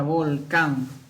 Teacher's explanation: Mayor fuerza en la última sílaba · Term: palabra aguda